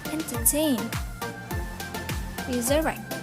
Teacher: the final syllable of entertain and resurrect is strong, so it will receive primary stress in the final syllable